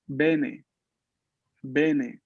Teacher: esta E que tenemos aquí es una E abierta. Es una E abierta, que quiere decir que la boca, ¿no? Se abre bastante, mucho, para poder pronunciar bien ese sonido abierto de esta E.